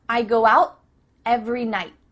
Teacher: tongue is at the top of your mouth you're about to make the T sound but no air goes through so it's just stopped at the top of your mouth